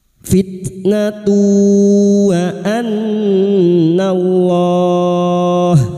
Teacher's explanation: Idgham bighunah. Masuk pada huruf wau dan mendengung selama tiga harakat.